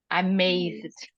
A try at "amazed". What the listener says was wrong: Não, você continua falando o E no final.